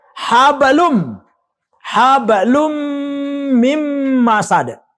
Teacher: Tanwin di depan bertemu dengan huruf mim. Maka dia wajib dibaca dengung. Itulah idgham biguna.